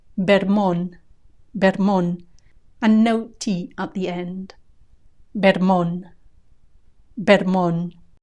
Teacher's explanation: Vermont, Vermont, with a B at the beginning. Vermont, Vermont, and no T at the end.